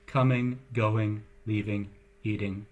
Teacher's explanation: one more nasal further back in the mouth in the K G location